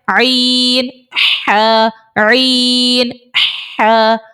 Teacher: عین اور حا یہ حلق کے درمیان والے حصے سے ادا ہوتا ہے، وسط حلق سے، یعنی حلق کا جو نیچے والا حصہ جہاں سے ہم حمزہ ہا نکال رہے ہیں اس سے تھوڑا سا آپ اوپر آ جائیں، حلق کا درمیانہ حصہ آپ کو مل جائے گا، وہاں سے عین اور حا دونوں نکلتے ہیں۔